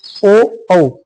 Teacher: ओ औ आवाज सीधी आ रही है और हमारे होठ गोल हो रहे हैं, ठीक है। तो होठ का भी यूज हो रहा है, तो कंठ एवं होठ से तो इसका वर्ग बन जाएगा कंठ ओष्ठ या कंठ ओष्ठीय, है ना, कंठ ओष्ठीय कर देंगे, यह हो लगा दो, कंठ ओष्ठीय बन जाएगा।